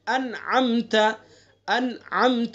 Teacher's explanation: نون ساکن اور تنوین کے بعد اگر حروف حلقی میں سے یعنی حمزہ، ہا، عین، ہا، غین، خا، ان 6 حروف میں سے کوئی حرف آئے گا تو کیا ہوگا؟ اظہار ہوگا، اس میں غنہ نہیں کریں گے